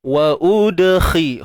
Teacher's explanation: Wa udkhilal. Untuk huruf dal yang sukun ni kita sebut qalqalah sughra, lantunan kecil